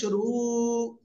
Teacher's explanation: আর র অক্ষরের উপরে পেশ রয়েছে মোটা আওয়াজে পড়তে হবে